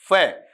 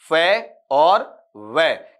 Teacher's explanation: तो जो लेबियोडेंटल साउंड होता है उसमें क्या होता है, जब आपके ऊपर वाले दांत, अपर टीथ होते हैं, नीचे वाले होठों को, नीचे वाले होठ को हल्का सा स्पर्श करते हैं, जैसे देखना, फे, ऊपर वाले दांत नीचे वाले होठ को हल्का सा स्पर्श कर रहे हैं